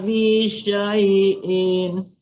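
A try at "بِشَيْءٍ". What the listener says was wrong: Matikan amzahnya. Bisyai, jangan bisyai'in.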